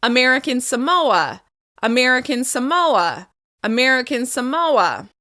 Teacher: the second word will be stressed. In this case, it will be the second syllable.